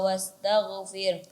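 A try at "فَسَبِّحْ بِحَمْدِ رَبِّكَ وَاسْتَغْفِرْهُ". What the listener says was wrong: Ya, huruf ha dijelaskan lagi, terlebih lagi huruf ha kecil. Fasabbih, ya, dihabiskan. Fasabbih bihamdi. Kemudian ada huruf ghain yang sukun, sebelumnya ada huruf berbaris fathah, maka ditebalkan. Fasabbih bihamdi rabbika wastaghfir. Taghfir. Iya, kemudian setelah huruf ra di sini kan ada huruf ha besar, maka juga dijelaskan. Ya, keberadaan huruf ha di sini dijelaskan lagi. Fasabbih bihamdi rabbika wastaghfir. Fir. Ya, ada ha besar.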